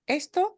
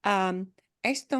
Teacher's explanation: When we stress the beginning syllable, it is the word for this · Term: punching the beginning